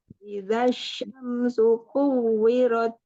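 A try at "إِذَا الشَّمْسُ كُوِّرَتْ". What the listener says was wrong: Jangan nggak usah lama-lama. Dia langsung masuk ke waw langsung.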